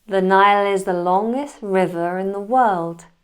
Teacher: We have the linking Nile is. Then we have the deleted T in longest river, followed by an intrusive R in riverin.